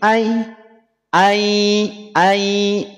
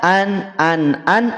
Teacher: maka yang semula an dia akan melebur menjadi Ai